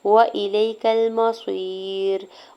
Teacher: या साकिन से पहले लाम के ऊपर ज़बर या लीन हो रहा है, नरमी से मोड़ते हुए अदा करेंगे